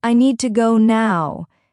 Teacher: You can hear how the stress falls on need and now. It gives the sentence energy and flow.